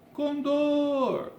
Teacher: Então, dor é a tônica.